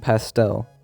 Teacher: the stress on the last syllable and start with the T since there's an S before the T in pastel the T becomes unaspirated